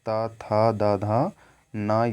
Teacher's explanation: त, थ, द, ध, न ये सभी दंत से ये उच्चारित किया जाता है